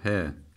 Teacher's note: okuyalım Mahreç yeri neresi bu H harfinin boğazımızın boğazımız diyelim şurası boğazımızın göğüse bitiştiği en alt kısmından çıkıyor